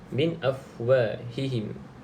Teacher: nun yang ada tanda mati baca terus dengan bacaan jelas, iaitu izhar